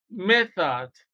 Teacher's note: the th in method is voiceless